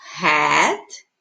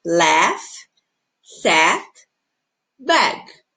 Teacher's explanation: Daí eu tenho hat, com a boca mais aberta